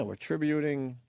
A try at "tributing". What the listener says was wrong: Tributing. There's no way to back out when you put the emphasis on the wrong syllable. We're tributing. No.